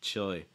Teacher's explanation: You can actually pronounce this entirely with a dark L. You don't need to use a light L sound for this.